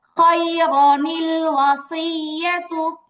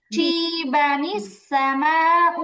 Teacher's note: আলিফটা বাদ দিয়ে শুধু নুনে কুতনি দিয়ে মিলায় পড়বে